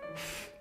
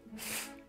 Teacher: This last sound eventually evolved from bilabial f to labiodental f, like the first sound of English fish.